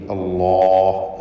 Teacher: ഇസ്മുൽ ജലാലയിലുള്ള ലാമിനെ തടിപ്പിച്ച് ഉച്ചരിക്കണം, തഫ്ഖീം ചെയ്ത് ഹെവിയാക്കി അല്ലാഹ് എന്ന് പറയുക.